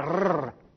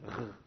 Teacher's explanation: C'est comme si vous disiez un R. Alors, pas un R roulé, hein, pas R, mais un R grasseillé.